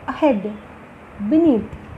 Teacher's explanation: అహెడ్, బినీత్ అనే దగ్గర కూడా మనము బి దగ్గర అసలు ఎయిర్ ఫోర్స్ వాడటం లేదు, నీత్ దగ్గర కొంత ఫోర్స్ వాడుతున్నాం కాబట్టి అక్కడ స్ట్రెస్ వస్తుంది. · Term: వీక్ ప్రిఫిక్స్